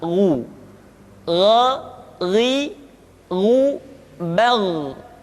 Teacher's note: Ketika dhammah, baru bibir kita dimonyongkan sehingga keluar vokal u dengan sempurna